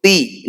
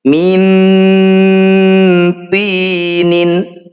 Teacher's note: Ti, ini kita panjangkan 6 harokat. Huruf terakhir kita sukun. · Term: mad arif disukun